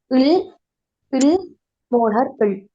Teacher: சரியாக உச்சரிச்சு பார்த்தா விளங்கும் எனவே இந்த மூணு எல்லையும் நாங்க உச்சரிக்கும் போதுதான் எங்கட நாக்குட இரு மருங்கள இருந்தும் காற்று போறதால இதுக்கு நாங்க சொல்லுறோம் மருங்கொலிகள்